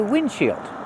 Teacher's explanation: We don't pronounce the D.